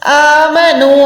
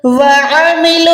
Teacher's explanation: Proper آپ نے الف اور عین میں فرق کرنا ہے. الف کو سینے سے ادا کرنا ہے عین کو حلق کے درمیان سے ادا کرنا ہے